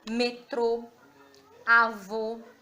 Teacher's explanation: acento circunflexo, vogais EO tem um som fechado.